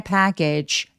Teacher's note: 맨 마지막에 GE는 약간 울림이 있게 package, 라고 소리가 나는데 얘가 모음은 없이 소리가 나야만 해요. 뒤에 모음이 없으니까.